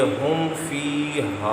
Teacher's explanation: نہ تو میم آیا نہ ہی با آیا، غنہ نہیں کریں گے، اظہار شفوی کریں گے